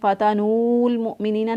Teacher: کیونکہ واو ساکن تھا، یہ پڑھنے میں نہیں آ رہا